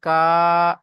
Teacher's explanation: তাহলে আলহাকুমুততা কাফ আলিফ জবার কা এক আলিফ পরিমাণ টান হবে আলিফের ডানদিকে জবার এসেছে একে আলিফ মাদ বলা হয় আলিফ মাদ্দাকে এক আলিফ পরিমাণ টান দিয়ে পড়তে হয়